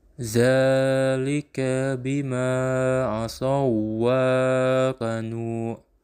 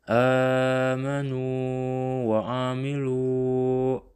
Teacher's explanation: Maka membacanya tidak boleh diidghamkan atau dimasukkan dalam huruf yang kedua tetapi harus dibaca panjang atau juga disebut mad sebagai mestinya.